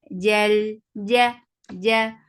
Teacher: Jal, ja, for fatha upon your jaws, there is no flow of sound here, so the sound jim has shidda